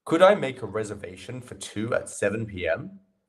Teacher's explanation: the inflection in my voice goes up at the end this quite often happens when you're asking a question it's a good way to uh indicate that it's a question